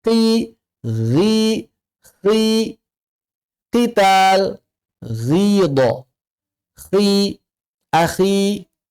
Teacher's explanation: ketika huruf isti'la infitah berharokat kasrah, level ketebalannya di 20 aja. makannya terasa mirip atau dekat sekali dengan huruf tarqiq.